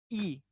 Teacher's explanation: जब छोटी ई और बड़ी ई को आप बोलोगे, तो इसमें हमारी जो जीभ है, वो जीभ तालु में ऐसे चिपकने का काम करेगी। कैसे काम करेगी, ऐसे चिपकेगी। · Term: तालव्य